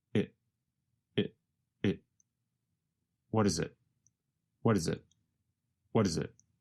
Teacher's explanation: The letter T in what changes to a sound closer to the letter D. And the word it goes by so fast that it becomes very reduced to just a vowel sound plus a very fast held T.